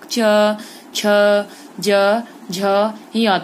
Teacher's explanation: आपकी जीभ जो है कहाँ चिपकती है बच्चों, मुख के ऊपरी भाग पर, तालु पर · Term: तालव्य वर्ण